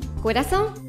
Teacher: Su acento está en la última sílaba, por lo que pertenece al grupo de las agudas. Se tildan cuando terminan en la consonante N, S o en vocal.